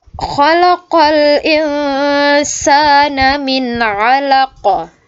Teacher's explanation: hukum bacaan qalqalah kubra itu pantulannya lebih besar, ya.